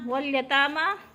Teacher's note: تا بھی کھڑی زبر، میم پہ بھی کھڑی زبر، دونوں کو ایک الف کے برابر کھینچ کر پڑھنا ہے